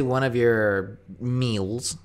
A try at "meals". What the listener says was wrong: is there two syllables in the word meals? You're saying it with 2 syllables.